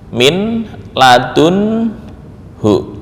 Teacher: nun dan lam pada saat itu berubah menjadi lam ketika bertemu dengan lam